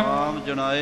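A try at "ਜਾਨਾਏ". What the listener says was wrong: हाँ जी, कई जनाए भी कह जाते ने। जजे नू कन्ना भी जरूर बोलना है, मगरली हाहे दी सियारी भी जरूर बोलनी है, पाठ नू वखरा भी नहीं करना।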